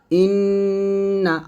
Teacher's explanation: ইন্না আর গুনা নাকের মধ্যে বাজতেছে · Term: ওয়াজিব গুন্না